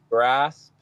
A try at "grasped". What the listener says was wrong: Didn't make the D.